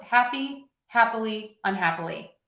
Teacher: Happily. When I add un, everything needs to get shorter, all of those beats.